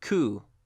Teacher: this word is pronounced coup, and the P is completely silent.